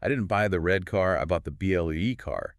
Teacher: The pitch of my voice tells you that color is the new prominent information. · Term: tonic emphasis